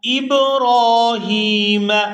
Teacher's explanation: یہاں را کو پورا ادا کرتے ہوئے کھینچ کر ادا کریں گے کیونکہ اس کے اوپر کھڑی زبر ہے